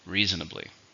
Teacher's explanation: 4, stresses on the first one.